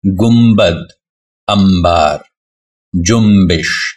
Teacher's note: نون کے بعد اگر بے ہو تو نون کی آواز میم میں بدل جاتی ہے